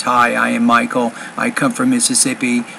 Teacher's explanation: You're kind of speaking, it's almost putting the same emphasis on a lot of your words. You're not making anything higher or lower. It's all the same, and that is a critical problem in your delivery. · So delivery, you're not speaking loud enough, you're not speaking clearly enough, you're not varying your intonation really in any way.